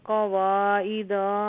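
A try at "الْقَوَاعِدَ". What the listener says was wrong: क़वाइदा दाल लंबा नहीं है,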